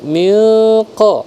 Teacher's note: ikhfa disamarkan dengan tetap ditekan selama dua harakat